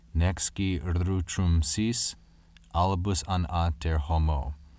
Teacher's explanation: Here we have the strong caesura in the second line and an elision between ski and utrum.